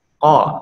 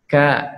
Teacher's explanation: Bedanya huruf qaf tidak keluar nafas, huruf kaf harus sambil menghembuskan nafas.